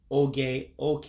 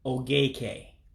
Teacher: So you would say, and again, this is one where you're running two words together, that oke, that becomes one word. So you drop one of the vowels, just like you do in English when you make a contraction.